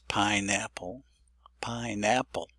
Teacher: the word pineapple, I think, is supposed to be stressed on the first syllable on the pi.